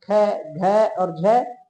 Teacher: जो जय ध्वनि है वो महाप्राण नहीं है, बाकी ख, घ और झ ये सभी महाप्राण होते हैं।